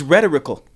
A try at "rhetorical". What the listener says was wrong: You're rhetorical. That is putting the emphasis on the wrong syllable.